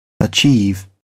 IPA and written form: əˈtʃiːv (achieve)